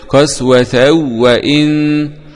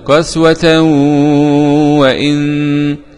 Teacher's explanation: قرأ خلف عن حمزة بعدم الغنة في عند الواو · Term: الإدغام بغير غنة